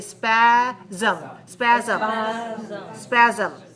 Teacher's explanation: there's a secret vowel in there we don't write a vowel letter but we have to pronounce a vowel sound